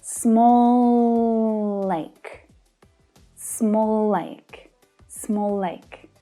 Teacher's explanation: There's no pause there at all, no break in the sound. It's just one continuous sound. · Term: consonant to consonant linking